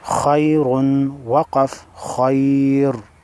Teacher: خا حروف مستعلیہ میں سے ہے لہذا موٹی پڑھیں گے